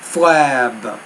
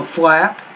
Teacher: make the vowel longer before the B consonant. Make the vowel sound a little bit shorter before the P.